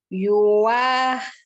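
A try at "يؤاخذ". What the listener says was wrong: Itu bukan yuwa, bukan yuwa, itu hamzah. Bukan yuk. Ini hamzah, jadi a.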